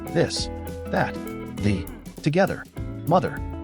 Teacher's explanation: Voiced TH, you can feel vibration in your throat.